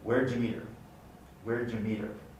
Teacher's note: The H of her is followed by the unstressed meet her. And then the flapping occurs on the T, because it's now followed by an unstressed vowel